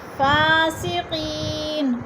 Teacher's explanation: یا مدہ کو ایک الف دو حرکات کے برابر لمبا کر کے پڑھنا ہے